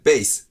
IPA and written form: beɪs (base)